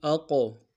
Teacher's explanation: قاف حرف قلقلہ میں سے جب ساکن ہوگا تو قلقلہ کریں گے۔ اقو، سین کی سیدھی باریک ہوگی، قاف کو موٹا ادا کریں گے۔